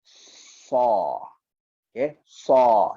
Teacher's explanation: pangkal lidah kita naik ke atas dan kita tekan dia ke atas. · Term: itbaq